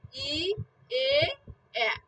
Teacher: এই তিনটা উচ্চারণ করলে কিন্তু আমাদের ঠোঁট কিন্তু গোল হচ্ছে না, অগল থাকতেছে।